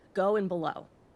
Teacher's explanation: have a single stress syllable at the end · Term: single or masculine rhyme